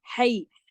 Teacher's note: ہا گلے سے پڑھا جائے گا